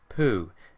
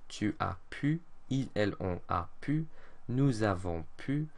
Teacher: This is not pu, it's a tight, pursed-lipped pu sound